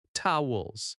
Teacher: Towels has stress on toe, towels.